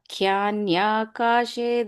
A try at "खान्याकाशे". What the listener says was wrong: When you go to the first letter sound, it's ka, not kya. I heard a kya sound. Kanyakashi.